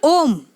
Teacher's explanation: जिन स्वरों के उच्चारण में मूल स्वरों से तिगुना समय लगता है वे प्लुत स्वर होते हैं